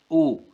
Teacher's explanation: परंतु अब इन्हें देखेंगे हम वृत्त स्वर जो होते हैं हमारे इनमें मुंह हमारा गोल होता है वृत्त की तरह होता है · जब हम ऊ को बोलेंगे तो हमारे ओठ गोल हो जाते हैं, वृत्त की तरह बन जाते हैं, इसलिए ये वृत्त स्वर हैं।